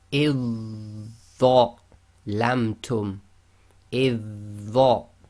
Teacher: So we ignore the dhal completely, join directly to the dha.